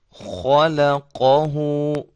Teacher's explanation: खा और काफ ये दोनों मोटे हरूफ हैं, दरमियान में बारीक है। इसको बड़े एहतिमाम के साथ, कि ये ना हो कि इन दोनों हरूफ के साथ ये लाम भी मोटा हो जाए।